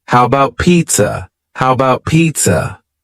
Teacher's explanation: The first a in the word about is gone it's just missing